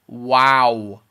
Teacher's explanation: should round and you you should make the sound wow wow so you start off with woo you say ah and you end up with ooh